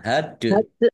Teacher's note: Dal sukun bacaan qalqalah dibaca memantul ditampakkan pantulannya.